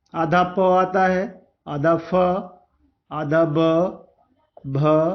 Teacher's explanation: प वर्ग का उच्चारण स्थान क्या होता है? ओठ होता है, इसीलिए इसको ओष्ठ वर्ण कहते हैं।